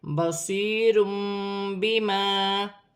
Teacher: 2 پیش کی تنوین کے بعد با ہے اور یہاں چھوٹی سی میم لکھی ہوئی ہے۔ تنوین کی آواز کو میم سے بدل کر غنے کے ساتھ ادا کیا جائے گا